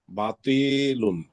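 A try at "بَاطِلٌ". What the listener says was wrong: বাতিলুন বা এক আলিফ টান হবে বায়ের পরে মানে খালি আলিফ বাস বাতিলুন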